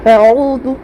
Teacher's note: عین میں واو مدہ ہے، واو ساکن سے پہلے عین کے اوپر پیش ہے، 1 الف کی مقدار کھینچ کے معروف پڑھیں گے